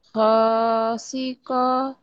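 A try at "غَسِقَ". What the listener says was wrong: Go, ada titiknya ya. titiknya, betul. Go. Gosiqa.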